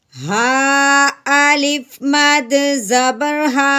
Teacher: मद को 4 अलिफ के बराबर करेंगे क्योंकि आगे हमज़ा है, लेकिन हमज़ा उसी कलमा में नहीं है बल्कि अगले कलमा में है। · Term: मद्दे मुनफसिल